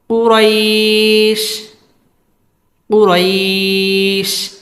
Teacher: ওয়াকফ করে শিনের মধ্যে সাকিন করে দিব